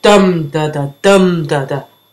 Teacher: a stressed syllable followed by two unstressed or less stressed syllables